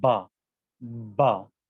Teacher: اور حرف با کے لیے آپ کو موٹا بنانا ہوگا، اس کو موٹا بنا کے ادا کیا جائے گا، با، با، جسے کہتے ہیں بے، ما، بے۔